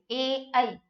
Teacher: तो ध्यान रखना है ए और ऐ, ये कंठ और तालु, ये भी दो दो से बोले जाएंगे, कंठ और तालु से। ठीक है, किससे बोले जाएंगे, कंठ और तालु से, तो इसको हम कंठ तालव्य भी बोल सकते हैं, कंठ तालव्य व्यंजन, कंठ और तालु से, ए ऐ।